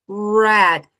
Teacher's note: é aquele R de um gargarejo, bem caipira, aquele som que sai lá do fundo da garganta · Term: som do R